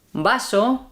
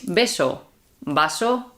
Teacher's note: we don't make a distinction between B and V